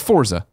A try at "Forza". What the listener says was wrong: I still hear a T. You say it again.